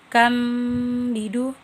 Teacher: Kam bidu iklab karena terdapat huruf nun di atasnya mim bertemu huruf ba. Cara membacanya dengan tanwin berubah menjadi mim dan berdengung serta ditahan selama 3 harokat.